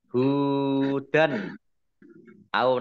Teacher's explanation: fathah tanwin bertemu dengan huruf alif bacaan idhar ya dibaca jelas